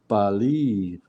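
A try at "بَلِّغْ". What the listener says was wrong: Balligh. So you hanging on the lam for a second and then letting it go. Balligh. Balligh. Balligh.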